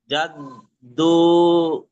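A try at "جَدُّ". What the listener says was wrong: না, জাদ্দা না, এখানে জিম দাল জাবর কি হয়, জাদ, দা পেশ দু, জাদ্দু। আপনি বলেছেন জাদ দাদু, এরকম বলেছিলেন মেবি।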